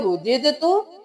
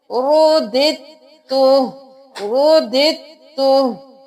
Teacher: हमने इस दाल को ता के साथ मिलाना है